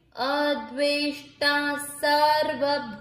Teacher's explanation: अब ना के ऊपर ये है अनुस्वार, शब्द के अंत में अनुस्वार है इसलिए इस अनुस्वार का उच्चारण होगा आधा म